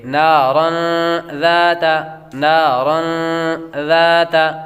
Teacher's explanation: تنوین کے بعد ذال حروف اخفا میں سے آ رہی ہے تو غنہ کر کے پڑھیں گے